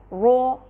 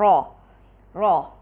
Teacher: را کی تفخیم کے لیے ایک چیز بہت ضروری ہے، وہ یہ کہ ہم ہونٹوں کو گول نہیں کریں۔ را کی تفخیم کے لیے ہونٹوں کو گول نہیں کیا جاتا، بلکہ جس طرح سے حروف الاستعلاء کو پڑھا جاتا ہے، یعنی کہ زبان کے پچھلے حصے کو اوپر اٹھا کے، بالکل اسی طرح را کو بھی تفخیم دی جاتی ہے، یعنی کہ را کو فتحہ کے ساتھ جب ہم پڑھ رہے ہیں تو اس کو مفخم پڑھنے کے لیے ہم را کر کے نہیں پڑھیں گے، یعنی ہونٹوں کو گول نہیں کریں گے، بلکہ را اس طرح سے اس کو ادا کیا جائے گا۔